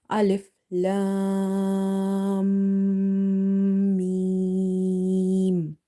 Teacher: So when you say the alif, lam, you will hear a buzzing sound while your mouth is closed. And when you try to say mim, you will observe that there is some sound in the nose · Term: Ghunna